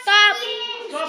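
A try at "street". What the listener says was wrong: नाही एसटी टी आला पाहिजे ट्र ट्र म्हणजे स्ट्रीट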